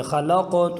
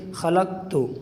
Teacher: اگر قلقلہ نہیں کریں گے تو آواز کاف کی آئے گی، ذرا دیکھیں خلقت تو معنی بدل جائے گا، قلقلہ یوں کریں گے خلقت نبغی۔